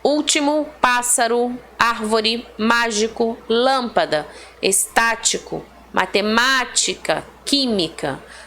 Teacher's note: Todas elas são acentuadas, né? Todas elas possuem acento tônico na antepenúltima sílaba.